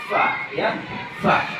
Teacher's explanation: Bibir bawah bertemu gigi seri atas, yaitu huruf fa